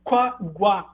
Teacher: pode oscilar entre a realização de iato ou como ditongo entretanto há um tipo de ditongo crescente que não se alterna com iato